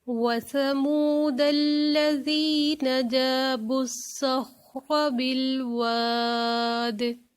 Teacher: یہاں پر صاد کو ہم موٹا پڑھیں گے اور خوا کو اور را کو